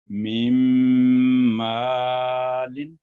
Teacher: یہاں پہلا نون تو سائلنٹ ہو گیا لیکن دوسرا جو میم ہے مشدد وہاں گنا ہو گیا 2 سیکنڈ کا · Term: ادغام ناقص